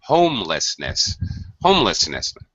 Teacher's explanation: First syllable. That's it. First syllable stress.